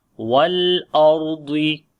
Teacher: On the lam we make tawassut quality. Ra and Dwad, both we read in heavy sound. Ra we read in heavy due to sukun sign on the Ra, and there is a fatha before the Ra. · So we say wal ardi, and on the lam and on the Ra, both letters have tawassut quality. · Ra we read in heavy due to sukun sign on the Ra, and there is a fatha before the Ra. This is the reason, and Dwad is from isti'la letter.